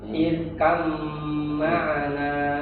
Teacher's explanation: Huruf ro apabila didahului dengan hamzah wasal maka dia dibaca tafkhim.